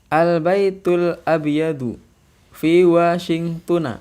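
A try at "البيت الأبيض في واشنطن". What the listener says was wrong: Iya.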